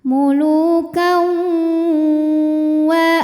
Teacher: Sebab ada tanwin fathah yang menghadapi huruf wau. Maka tanwin ini dimasukkan ke wau muluka sambil ditahan didengungkan sampai ada suara masuk hidung. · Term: idgham bighunah